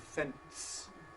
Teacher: intruding, if you like, a [t] between the [n] and the [s] · between a nasal and a voiceless fricative, you get a plosive agreeing in place with the nasal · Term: epenthetic [t], epenthetic T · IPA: [fents]